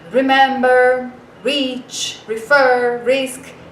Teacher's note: Já o R, ele não tem esse som forte. Mesmo no começo das palavras, ele tem aquele som fraquinho que a gente tem no meio das palavras em português